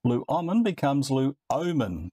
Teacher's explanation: All predictable, the vowel at the beginning of the ending lengthens.